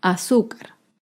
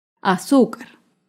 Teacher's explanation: azúcar es una palabra grave y se acentúa en la penúltima sílaba